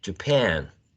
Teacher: And then we have the second syllable stressed